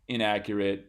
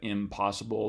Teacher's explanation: the n changes to an m before p because those are both bilabial um consonants at a less formal level um in casual speech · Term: place assimilation